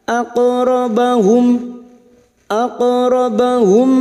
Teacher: Huruf qaf sukun yang mati asli di tengah kalimat qalqalah sughra. Jangan lupa dipantulkan